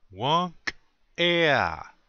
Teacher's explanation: you're putting a little space between the K and the E. You say the K sound, but you cut it off really short.